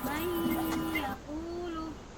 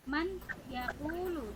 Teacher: Seharusnya kalau itu diguna itu dimasukkan ya. Nun sukunnya dimasukkan ke huruf ya. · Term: idgham digunnah